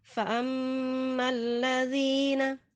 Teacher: Kita baca, kita dobelkan lamnya, namun jangan dibaca lama ya. Jadi bukan fa ammal ladzina, cukup dibaca didobel dan cepat ya. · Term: idgham syamsi